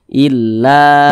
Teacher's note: fathah dan berposisi tepat berada di belakang huruf alif nah thii panjangnya dua harakat atau kira-kira dua ketukan